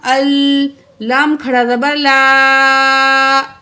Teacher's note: لام درمیانی لام کو کھینچنا ہوتا ہے تھوڑا سا، 2 الف کے برابر، تو آپ نے یہ کھینچنا ہے، کیونکہ اکثر ہم نماز میں سورۃ اخلاص پڑھتے ہیں، ٹھیک ہے۔